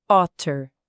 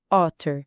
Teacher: É um ataque curto, otter. E o T bate no céu da boca, otter. Não dá para confundir se a boca estiver no lugar certo.